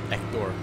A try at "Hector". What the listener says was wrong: Nah, it doesn't have an accent, you don't pronounce it like that. Just Hector.